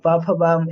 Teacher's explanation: प वर्ग का उच्चारण स्थान क्या होता है? जी तो ओष्ठ होता है प ओष्ठ हो रहा है।